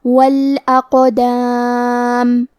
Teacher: قاف کی ادائیگی زبان کے جڑ اور تالو کے نرم حصے سے ہے. قاف حروف تفخیم میں سے ہے، تو ہمیں یہ حرف کو موٹی آواز میں پڑھنا ہے، اور کیونکہ اس پہ جزم ہے تو یہاں قاف کا حکم ہے قلقلہ، ہم یہ حرف کو ہلاتے ہوئے یہ کلمہ کو پڑھیں گے.